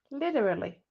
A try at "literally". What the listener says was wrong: No. Literally. It's got a in it.